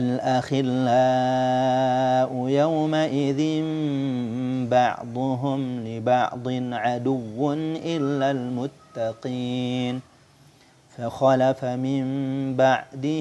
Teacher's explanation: sukun atau tanwin menjadi Meme yang tersembunyi pada huruf ba yang disertai dengan ghunnah dengan merapatkan dua bibir tanpa menekannya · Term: iqlab